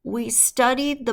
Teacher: a Upward lilt at the end of your sentence where it almost sounds like when you're making a statement you're asking a question